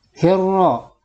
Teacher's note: Dan ketika dibaca, huruf lamnya tidak tampak, tapi diidghamkan atau dimasukkan ke huruf ro. Nah, tandanya adalah ada tanda tasdid. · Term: alif lam syamsiyah